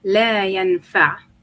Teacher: The phoneme at the end, it's a squeezing of the epiglottal sound. So or squeezing of the throat, sorry.